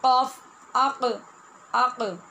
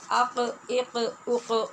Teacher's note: तो ये जब हम कहते हैं ना क़ाफ़, आक़, आक़, आप देखें कि अपने मखरज में आवाज़ टकरा के वापस आ रही है, इसी को क़लक़ला कहते हैं